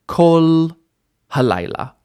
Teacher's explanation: And the kamatz here is a kamatz katan. It is an O sound instead of the anticipated A sound.